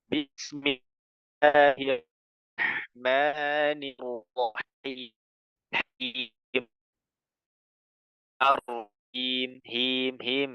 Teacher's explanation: basmalah ya bismillahirrahman ya itu Arrahman itu pakai huruf ha ya pakai huruf ha jadi ha itu Tengah tenggorokan